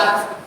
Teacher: Yang benar adalah at. Ujung lidahnya berada di gusi persis. At. Nah, jadi sedikit saja dialirkan taknya sedikit.